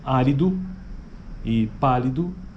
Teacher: As vogais pós-tônicas mediais nas palavras árido e pálido tem símbolo I, né, que é o equivalente a um I, assim, sabe, na transcrição fonética.